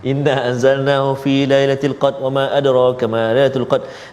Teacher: Ketika nak baca cepat-cepat tu huruf ra semua hilang hujung.